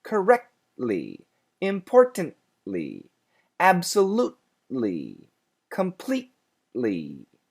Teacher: I stop very briefly and then make the ly sound.